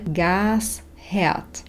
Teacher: Der Gasherd, písmeno H vyslovíme, pretože stojí na začiatku slova herd v zloženom slove Gasherd. Pozor ešte na neznelú výslovnosť písmena S. Tu nám pri výslovnosti pomôže malá pauza medzi slovami gas a herd.